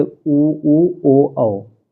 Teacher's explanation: वृत्ताकार और अवृत्ताकार की बात करें तो वृत्ताकार में आता है ऊ ओ औ